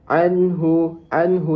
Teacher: nun sukun bertemu dengan huruf halki yang ha dan nun tersebut dibaca jelas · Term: izar halki, izhar halki